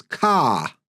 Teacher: Their accent is non-rhotic, which means they don't pronounce the R after a vowel sound, especially at the end of words.